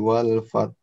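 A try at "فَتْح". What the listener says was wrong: Ada haknya di ujung. Fath. Fath. Sekali lagi.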